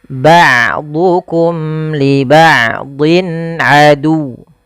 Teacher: Wa qulna bitu ba'dukum, hati-hati dalam hafal ain, jangan ba'dukum, jangan diganti dengan hamzah, jangan ba'dukum tapi dia ain. Ain memiliki salah satu sifat yaitu sifat bainiyah, yaitu tidak terlalu ditahan suaranya dan tidak terlalu dialirkan, tapi tengah-tengah.